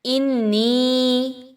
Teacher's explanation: نون مشدد کا غنہ ہے، آواز کو ناک میں لے کے جائیے، نون کو، نون یا زینی یا مدہ، اس کو 1 سے 2 الف کے برابر لمبا کیجئے۔